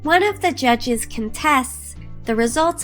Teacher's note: contests with the second syllable stress is a verb